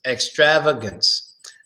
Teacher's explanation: the third a gets a schwa sound so its extravagance not extravagant but extravagance extravagance the third a